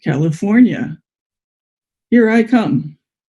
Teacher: because we had 2 feet in California, we can have 2 pitch accents there.